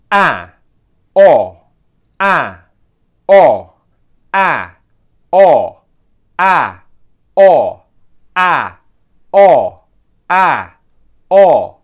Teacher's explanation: The next one is going to be the same principle, going between the front and the back of the mouth. This time we're doing it with two short vowel sounds, the sound a as in bat and o as in not